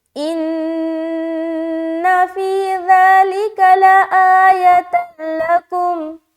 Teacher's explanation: ان فی ذالک، ذالک ذالک ذالک ذالک، آگے لآیۃ، لآیۃ، لام زبر لا، حمزہ کھڑا زبر آ، لا، یا زبر یا، تا لام زبر تل، یہاں پھر دو پیش کی تنوین کے بعد لام ہے تو یہاں پر ادغام تام یعنی کہ بغیر غننے کا ملانا ہوگا